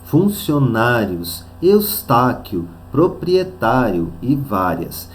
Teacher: é paroxítonas terminadas em ditongo funcionários estáquio proprietário e várias então nós vamos perceber que a penúltima sílaba é a tônica portanto são paroxítonas